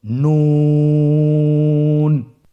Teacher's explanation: নুন হরফটির উচ্চারণ স্থান হচ্ছে জিহ্বার আগা তার বরাবর উপরে তালুর সঙ্গে লাগিয়ে উচ্চারিত হয়। আপনারা স্ক্রিনে দেখতে পাচ্ছেন জিহ্বার আগা তার বরাবর উপরে তালুর সঙ্গে লাগিয়ে উচ্চারিত হয়।